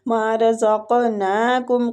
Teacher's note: قاف مستعلیہ ہے پور پڑیں گے اور ساکن ہے، اس پہ قلقلہ بھی کریں گے